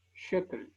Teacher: Segol, la siguiente vocal que corresponde al espectro de la E, es una E corta, equivalente a la D de dedo en castellano.